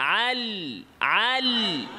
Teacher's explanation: না যেমন ধরেন না বলা যায় লামের আরেকটা সিফাত হচ্ছে ইনহিরাফ আওয়াজটা সোজাসুজি না যেয়ে জিহ্বার আগার দুই সাইড দিয়ে যাবে